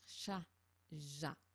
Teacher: pour le chat ja ce sont les côtés de la langue sur le palais mais plus derrière